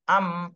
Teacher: মিমটা উচ্চারণ হয় দুই ঠোঁটের শুকনা অংশ থেকে